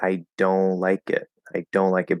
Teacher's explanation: if you do a little bit of a nasal even though there's no n there it sounds like there's an n and then of course the t just drops away